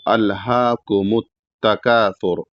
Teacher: मीम को ता में मिलाना है और ता को बारीक पढ़ना है। तो अलहाकुम तकासुर तकासुर में भी छोटा काफ है और छोटा काफ के बाद अलिफ है।